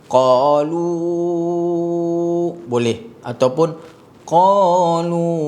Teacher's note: Lu itu boleh jadi 4 ataupun 5 harakat. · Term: 4 atau 5 harakat